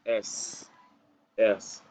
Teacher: in this consonant we use a little air and we just a whisper we almost whisper